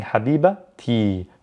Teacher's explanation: i pronounce the t when i'm connecting it to another word so in this case there's possession so i'm saying habiba ti